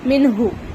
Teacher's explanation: ٹھیک ہے، یعنی کہ تنوین یا نون ساکن کے بعد حروف حلقی میں سے کوئی بھی ایک حرف آ جائے تو وہاں پر ہم کو کرنا ہے نون کی آواز کو ظاہر کر کے پڑھنا ہے